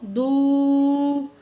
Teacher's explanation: واو ساکن ہے، پچھلے الفاظ پہ پیش ہے، واو مد ہے، 1 کاؤنٹ کھینچیں گے